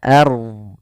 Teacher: Fil ard, pada lafal fil ard ada ada bacaan alif lam qamariyah. Kemudian pada lafal ard di sini rohnya dibaca tebal, jangan ard, tapi dia ard.